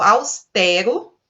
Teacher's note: Nesse caso aqui, nós não temos acentuação. Nós temos uma palavra que é paroxítona, pronunciada com E aberto